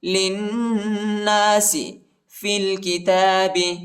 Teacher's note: لام کو نون کے ساتھ ملائیں گے اور غنہ کریں گے